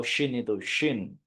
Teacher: tapi syin Nas alladziar alladzi tebal Ya alladzias ada apa namanya suara dan angin yang menyebar kalau Shin itu Shin ya Paham Bapak Ibu Nah nanti akan